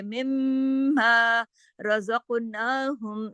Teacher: یہاں پہ میم پہ تشدید ہے تو سختی سے جوڑیں گے، لمبا غنہ بھی کریں گے